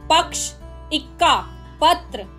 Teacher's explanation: संयुक्त व्यंजन के पूर्व वाले वर्ण पर बलाघात होता है। यहाँ बोलने में पहले वर्ण का स्वर थोड़ा तन जाता है